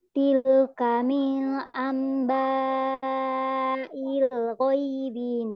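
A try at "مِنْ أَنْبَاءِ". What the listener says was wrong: Min ini dibaca jelas ya, jangan mil, tapi min. Min amba ya.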